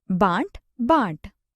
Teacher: इन स्वरों के उच्चारण में ध्वनि मुख के साथ साथ नासिका द्वार से भी बाहर निकलती है। अतः अनुनासिकता को प्रकट करने के लिए शिरोरेखा के ऊपर चंद्र बिंदु का प्रयोग किया जाता है। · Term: अनुनासिक स्वर